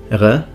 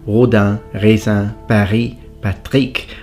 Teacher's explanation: technically the uvula trill, produced at the back of the vocal tract, usually with the uvula